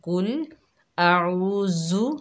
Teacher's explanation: عین کی آواز بالکل بھی نہیں نکلتی، ذال کو سختی سے پڑھتی ہیں